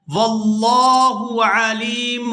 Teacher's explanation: یہاں پر لفظ اللہ کے لام کو پورا ادا کیا جائے گا کیونکہ اس سے پہلے زبر ہے۔